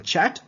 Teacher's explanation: This is the combination of stop, like t, and then sh sound. Stop followed by a fricative.